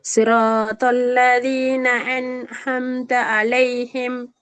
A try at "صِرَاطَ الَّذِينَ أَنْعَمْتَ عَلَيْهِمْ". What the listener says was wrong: சிரா என்று போக வேணாம், கொஞ்சம் குறையும். சிரோ பல்லதீன சிரோ பல்லதீன